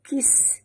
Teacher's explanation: Bunyikan safir pada sin yang mati